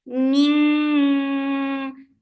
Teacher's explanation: Ning for kasra give e sound and then make heavy ikhfa. For heavy ikhfa, you are lifting your tongue up